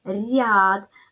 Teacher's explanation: нас пом'якшився тобто буква я пом'якшила попередній звук р робимо висновок буква я усередині складу означає один звук а і пом'якшення попереднього приголосного